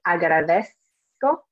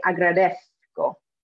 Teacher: We can say it like an S sound, like most Spanish speakers do around the world. Or if you are from Spain, they pronounce the Z in a specific way. It sounds more like a TH in English.